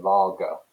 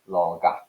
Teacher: what you've got is a hard ah it's called an ash vowel at the end there